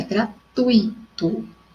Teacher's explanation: E também a sílaba tônica é o tui e não o i.